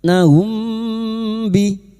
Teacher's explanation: Maka kita samarkan bunyi mim sukun humbi dan siap membunyikan huruf ba. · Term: Ikfa syafawi